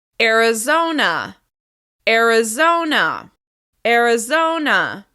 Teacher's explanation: The stress is on the third syllable.